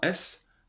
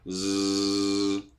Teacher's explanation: si on prend un S, c'est pas voisé. J'ai pas besoin de mes cordes vocales pour le faire.